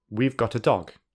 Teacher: a is commonly reduced to uh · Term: weak form